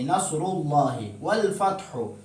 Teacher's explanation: نصر اللہ والفتح، یہاں جو ہا ہے اس کو حلق کے درمیانی حصہ سے ادا کریں گے